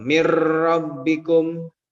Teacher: Nunnya dimasukkan ke dalam ro, jadinya mir rabbikum. Nah, ro-nya itu digetarkan. Gitu ya. Mir rabbikum. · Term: takrir